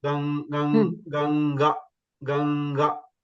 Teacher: It's Ganga. Then you have to pronounce from your the base, that is Kantya, and then the sound should come from the nose also.